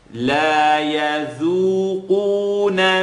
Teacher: So the dal is light and the qaf is heavy.